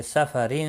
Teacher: تنوین کے بعد حروف اخفاء کا فا ہے، اخفاء حقیقی ہوگا۔